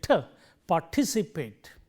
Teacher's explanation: And remember, when we stress this syllable, because the t occurs in the initial positions of the stress syllable here, it gets aspirated